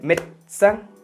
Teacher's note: Pero la E intermedia, médecin, desaparece.